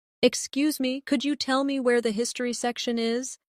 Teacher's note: In natural speech, could you becomes could ya.